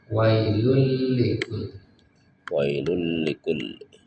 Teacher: tidak terdengar suara nunnya karena dilebur masuk ke huruf setelahnya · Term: bila guna